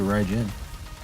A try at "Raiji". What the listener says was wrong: Raiji, there's no N.